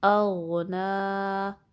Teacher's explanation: غائن کو پر پڑھیں گے، نون پہ کھڑی زبر ہے یا ل صغیرہ۔